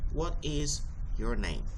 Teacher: we lower our voices on the last syllable of the sentence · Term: Fallen intonation